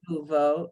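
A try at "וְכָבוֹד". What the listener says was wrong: No ooh. There's no vowel. No ooh.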